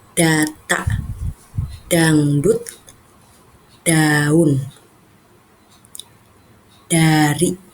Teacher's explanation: cara pengucapan huruf D itu pengucapannya dengan ujung lidah yang menyentuh gigi atas